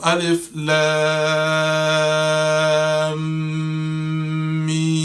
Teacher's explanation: there was a little hold in between my lam and the meme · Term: ghunna sound